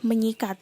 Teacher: Ada proses morfologis, yaitu pengimbuhan prefiksme pada kata dasar sikat. Maka fonem S diluluhkan dengan fonem nasal nye yang ada pada prefiksme yang menjadikan menyikat. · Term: peluluhan fonem